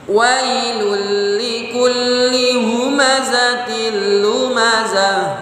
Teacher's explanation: Linya pendek ya. Ya, ada li dua, li itu pendek dua-duanya maka cepat bacanya